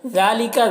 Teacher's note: ذال میں کھڑا زبر ہے جو الف مدہ کی طرح ہے، اسے بھی ایک الف کے برابر کھینچیں گے